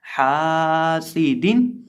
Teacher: यहाँ हम हा को लंबा करेंगे क्योंकि हा के साथ अलिफ है, इसलिए यहाँ हम हा को लंबा करके पढ़ेंगे।